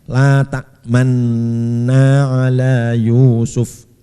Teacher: Jadi ketika membaca sukun masih mencampurkan dhammah, melihatkan dhammah, yaitu memoncongkan bibir ya, memoncongkan bibir. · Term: ismam